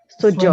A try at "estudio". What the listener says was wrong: suena, ajá, suena como en portugués y se puede decir estudio, dio. Sabe, por exemplo, como às vezes as pessoas que vêm do norte ou nordeste, por exemplo, dia, usa esse D, tá?